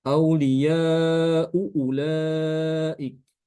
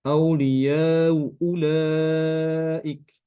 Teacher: Kalau bacaan kita hafaz kan ya, dibaca dengan jelas ya hamzahnya